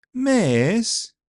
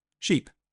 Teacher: the short ones can be long, miss, and the long ones can be short, sheep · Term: vowel length